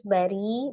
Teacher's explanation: ro kasroh dibaca tarqiq tipis